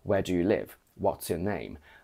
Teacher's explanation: when we ask a genuine question we go down